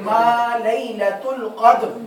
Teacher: جی وَمَا أَدْرَاكَ مَا لَيْلَةُ الْقَدْرِ، ما نہیں بولنا ما، ٹھیک ہے، یہ فرق. میم زبر الف ما، چونکہ میم باریک پڑھا جاتا ہے تو الف بھی باریک · میم بھی باریک، الف بھی باریک، لام بھی باریک، یا بھی باریک، لام بھی، اور یہ تا بھی باریک آواز سے پڑھا جائے گا